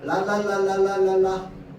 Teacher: 혀 끝이 윗잇몸에 붙었다 떨어지네